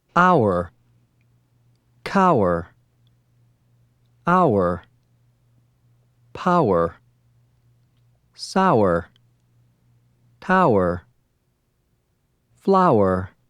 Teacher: For hour, begin with the ow, then add were as you drop your voice.